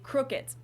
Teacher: in German we don't really make a difference between a d and a t at the end of words